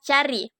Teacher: bunyi a dengan ciri-ciri rendah depan tak bulat